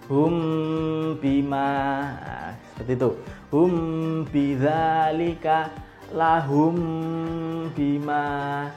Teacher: ditahan minimal dua ketukan sampai terasa di Pangkal hidung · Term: Ikhfa Syafawi, ikhfa syafawi